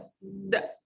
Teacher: When we say d, d, there is vibration, and we have a voiced sound.